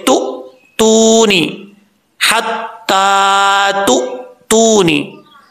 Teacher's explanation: लेकिन यहां पर जो हमजा है ये हमजा साकिन है। हमजा साकिन जो है वो झटके से पढ़ा जाता है। अक्सर लोग इसमें गलती क्या करते हैं, मेन गलती ये है, झटका तो वो देते हैं लेकिन झटका देते हुए कलकला भी कर जाते हैं, जो कि बहुत बड़ी गलती है।